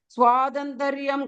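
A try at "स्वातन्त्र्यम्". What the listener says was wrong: second line, Swatantriyam, not Tantrayam, not a full tra, half tra. Swatantriyam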